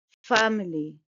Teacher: It's a three-syllable word and stress is on the first syllable.